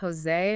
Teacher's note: Imagine a softer H sound, but it's made further back in your throat. Okay. Almost like a whispery H.